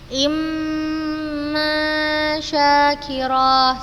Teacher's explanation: Ketika bertemu dengan huruf mim bertasydid, kita baca dengan tempo gunnah yang dipanjangkan juga.